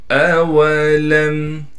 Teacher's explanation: لام کو میم سے ملانا ہے بغیر غننے کے، حمزہ کو صاف کر کے ادا کریں گے، واو کو بالکل نہیں کھینچنا۔